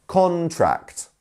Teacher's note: contract is the where we have the stress on the first syllable two syllables in contract